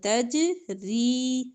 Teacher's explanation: جیم پر کلکلا ہوگا ، تجری، را زیر یا ری، زیر کے ساتھ یا جزم